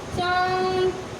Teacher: चांद में नाक और मुंह दोनों से निकल रहा है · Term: चंद्र बिंदी